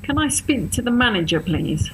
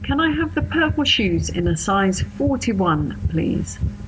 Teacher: Okay, so you probably noticed my tone of voice changed when I was ordering and when I was complaining. It's much deeper when complaining and much happier when ordering.